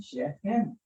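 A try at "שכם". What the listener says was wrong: Not Shechem. Shechem. No, that would be with a dot. Without a dot, it's a chaf.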